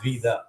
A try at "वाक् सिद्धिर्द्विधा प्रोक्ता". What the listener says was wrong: ரெண்டாவது தாதா அழுத்தணும்.